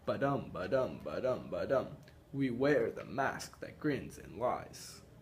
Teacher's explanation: The unstressed, stressed meter is called iambic